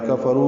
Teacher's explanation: رو واو مدہ ہے، یہ دو حرکات لمبا کریں گے